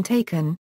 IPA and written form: ˈtʰeɪkən (taken)